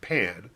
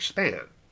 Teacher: P is a letter of the alphabet that is heavily aspirated in the word pan but not heavily aspirated in the word span